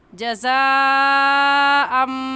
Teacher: तो हुरूफ़ मद्दा के बाद हमज़ा इसी कलमे में है, इस वजह से इस मद को मद्दे मुत्तसिल और मद्दे वाजिब कहेंगे। और इस मद को 4 अलिफ के बराबर खींच कर पढ़ेंगे, ना इससे कम और ना ही इससे ज़्यादा